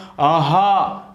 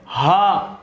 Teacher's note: किसी भी उच्चारण स्थल का प्रयोग ही नहीं होगा, आप अंदर से आवाज निकालेंगे